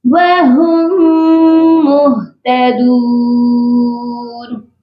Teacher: وَهُمْ، ادھر بھی دیکھیے دو میم اکٹھی ہیں تو ہم نے میم مشدد کو پڑھنا ہے اور میم ساکن کو چھوڑ دینا ہے۔ ہا کو جب ہم میم مشدد کے ساتھ ملائیں گے تو غنہ بھی کریں گے